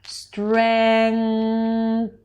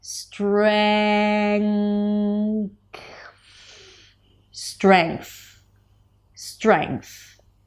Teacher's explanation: We have the ng consonant sound and then you shift to the th sound. Now the ngconsonant sound is an n that is pronounced in the back of the mouth. · Then you bring the tongue up for the TH. Now, in between the NG and the TH, there is a very soft k sound. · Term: consonant cluster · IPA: streŋkθ